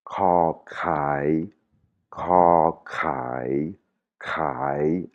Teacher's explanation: c'est comme s'il y avait de l'air après le K et et ça fait racler la gorge.